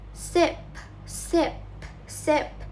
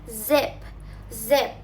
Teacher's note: These are called alveolar fricates because the tongue is close to the alveolar ridge behind the upper teeth. Example, sip for S, sip, sip, sip, zip, zip for Z.